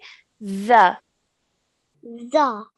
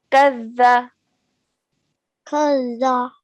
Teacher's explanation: we're using our tip of our tongue and touching it to our top two teeth at the front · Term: zal